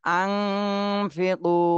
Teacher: নুন সাকিনের পরে ইকফার হরফ হা এসেছে, এই জন্য এই নুন সাকিনে ইকফা গুণা করতে হবে।